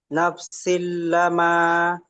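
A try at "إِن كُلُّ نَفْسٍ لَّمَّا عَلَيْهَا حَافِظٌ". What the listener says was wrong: লাম মা, লাম মিম সে আবার লাম, লামটা মিমের সাথে যুক্ত হবে, মিম তাজদিদ। কুল্লু নাফসিল লাম্মা, বলেন।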